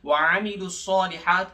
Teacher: وعاملوا الصالحات کے عین کو حلق کے درمیانی حصے سے ادا کریں گے، الصالحات کے صاد کو موٹا اور کھینچ کے پڑھیں گے، صاد کے اوپر کھڑا زبر ہے 2 سیکنڈز کے برابر، ہاتھ یعنی ہاتھ کے اوپر بھی کھڑا زبر ہے، اس کو بھی 2 سیکنڈز کے برابر کھینچ کے پڑھیں گے، ایک الف بقدر۔